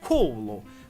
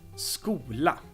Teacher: it's not very common for a standard Finnish to have a double consonant at the beginning of a word so the S is dropped